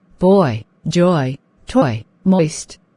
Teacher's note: the lips seem to form a circle forward then become neutral and the tongue moves forward upwards along with the closed jaw